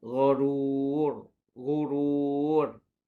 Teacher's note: Dibaca dengan tebal ra yang hujungnya tu